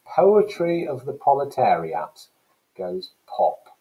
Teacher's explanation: We've got the repetition of that plosive sound, the puff.